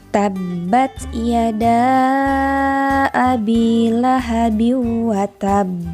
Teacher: di kalimat terakhir akhirnya berarti harus di pantulkan karena hurufba ini termasuk ke dalam huruf Qalqalah